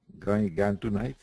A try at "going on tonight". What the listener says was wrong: get rid of the G. Going on tonight? It was this, you got that hanging G sound, and some people do. So it's not necessarily wrong, but going on.